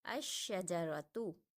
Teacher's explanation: ہم نے حمزہ کو شین کے ساتھ ملایا اور لام کو نہیں پڑھا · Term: حروف شمسی